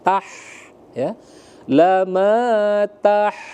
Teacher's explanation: ha pedas atau ha kecil, terbuka rongga tenggorokannya.